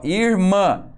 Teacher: indica só nasalidade aquele que o ar sai uma parte pelo nariz